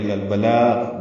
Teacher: بلاغ کے لام کو باریک پڑھنا ہے